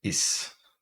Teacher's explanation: that's like the second vowel in roses it's kind of a high mid vowel